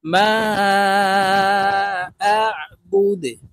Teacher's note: দালকে ওয়াকফের ক্ষেত্রে সাকিন করে ফেলবো। দাল যেহেতু কলকলার হরফ, নিচের দিকে ধাবিত করে ধাক্কা দিয়ে উচ্চারণ করব